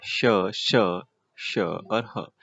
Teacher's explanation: ये तीनों अघोष व महाप्राण है और ह हमारा सघोष और महाप्राण है। पहले वाले अघोष है और ह हमारा सघोष है। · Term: ऊष्म व्यंजन